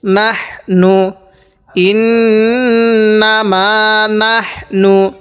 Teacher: হাটা উচ্চারণের সময় মুখ দিয়ে একটু হালকা বাতাস বাইরে হবে।